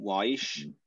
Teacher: if it's used at the beginning of a word before a vowel it will have kind of a w quality